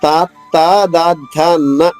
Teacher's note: పళ్ళకి మధ్యలో ఉండే భాగంలో వచ్చేవి తవర్గము నాలిక పైకి పెట్టి పలుకుతాం అలాగే దంతాలతో నాలిగిని టచ్ చేసి పలికేది తవర్గము